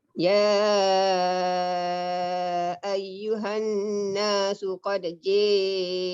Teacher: Tak ada qalqalah sebab kita dah idgham.